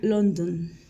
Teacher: emitimos una e muy corta y opaca como e no acentuada · la forma práctica para podemos acercarnos al sonido es imaginarnos como haciendo una transición o puente entre dos consonantes es decir casi se omite la vocal como si no existiera · Suena London, donde no hay que pronunciar ninguna vocal en la última sílaba, sino pronunciar la D y continuar la transición hacia el sonido de la N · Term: shua, schwa